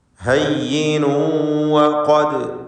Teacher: തൻവീനിനെ വാവിൽ ഇദ്ഗാം ബിഗുന്ന ചെയ്ത് വാവിലേക്ക് ലയിപ്പിച്ച് മണിക്കണം, ഭാഗികമായി ലയിപ്പിക്കുക. ഹയ്യിനു വഖദ് ഖാഫിന് തഫ്ഖീം കൊടുക്കുക, ദാലിന് ഖൽഖല സുഗ്റ നൽകി ശബ്ദം ചലിപ്പിക്കുക, ഹറക്കത്ത് പോലെ വ്യക്തമാക്കി ദാലിൻ്റെ സുക്കൂൻ ഉച്ചരിക്കുക.